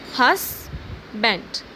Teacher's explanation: The stress is on hus and then band, husband.